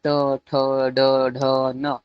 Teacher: ट ठ ड ढ न व मुर्धा में उसका उच्चारण स्थान है · तो ट वर्ग का उच्चारण स्थान मूर्धा से